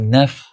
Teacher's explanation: Naf ada sifat hams kat tu, naf. Ada angin, hembusan angin yang kita rasa keluar tu.